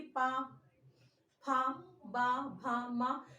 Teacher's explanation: मेरे होठ आपस में स्पर्श कर रहे हैं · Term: ओष्ठ